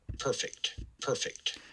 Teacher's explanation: so i think this person had yep aspirated p which is good · they transcribed stress here on the first syllable which is also good